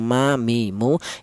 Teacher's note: huruf mim ini keluarnya huruf berasal dari kedua bibir yang rapat ya. Kita bilang ma, mi, mu, itu kedua bibir kita rapat dulu ya.